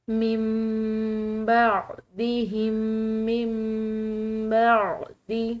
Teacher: نون ساکن میم سے بدل رہا ہے کیونکہ آگے با آ رہی ہے